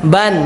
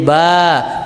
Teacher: ketika in sama UN dia kembali pengucapannya seperti Huruf asalnya tapi kalau dia tanwin an maka huruf tersebut menjadi panjang ketika dia wakaf an ketika dia wakaf menjadi a ban ketika diwakaf menjadi ba